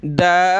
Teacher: बा पे शद है तो सख्त करेंगे, दाल को खींचेंगे